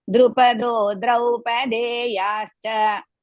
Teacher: Drupado, don't drag too much. Only two matrakala.